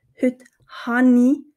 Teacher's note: wir fügen ein N als Verbindung zwischen diesen zwei Vokalen hinzu